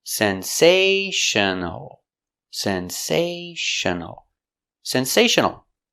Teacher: Four syllables. The stress is on the second syllable.